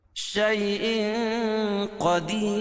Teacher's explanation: कदीर वफा की सूरत में ये र बारीक पढ़ी जाएगी · राय साकिना से पहले या साकिन हो तो राय साकिना को हर हाल में बारीक पढ़ेंगे · رائے ساکینہ سے پہلے یا ساکن ہو تو رائے ساکینہ کو ہر حال میں باریک پڑھیں گے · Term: را باریک